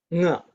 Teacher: So as you can see, it's not only nasal, the sound is coming through the mouth also. So it's a resonance between using the mouth and the nose is anunasika. · So anunasika, there's mouth and nose involved. Nga. So as you can see, it's not only nasal, the sound is coming through the mouth also.